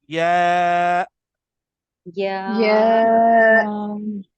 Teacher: जब आप या पढ़ें तो सिर्फ या बोल के छोड़े नहीं, बल्कि आखिर में हमजा आएगी